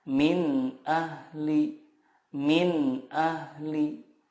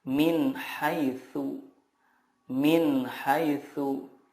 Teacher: huruf-huruf izhar di sini makhrajnya adalah dari tenggorokan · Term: izhar halqi